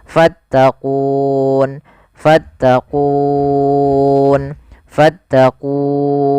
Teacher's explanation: karena ada sukun arid menjadi kita boleh membaca dengan 3 pilihan, boleh 2 harokat, boleh 4 harokat, boleh pula 6 harokat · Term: mad arid disukun